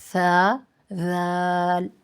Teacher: دونوں کی ادائیگی کے وقت آپ نے سیٹی کی آواز نہیں لگانی، سیٹی کی آواز نہیں آنی چاہیے